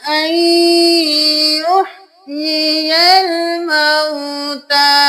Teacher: حمزہ زبر نون ان، لیکن ہم یہاں پہ نون کو نہیں یا کو ملائیں گے. یہاں پہ ہم نون کو یا میں مدغم کر دیں گے. حمزہ زبر یا این، یا زیر یہ، یا زبر لام یل، یہ یل، الف خالی ہے اس کو نہیں پڑھیں گے.